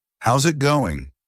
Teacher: Pay attention to how they say it, the casual tone, the slight rise in pitch at the end.